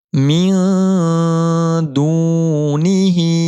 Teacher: نون ساکن کی آواز کو ناک میں چھپا کر پڑھیں گے۔ من دونہ، دال کو کھینچیں گے واو مدہ کی وجہ سے، ہا کے نیچے کھڑی زیر اس پر چھوٹا سا مد کا نشان ہے، یہاں پر ہو رہا ہے مد منفصل، 3 الف کی مقدار کھڑی زیر کو کھینچنا ہے۔